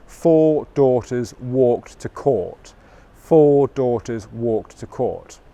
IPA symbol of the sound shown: ɔː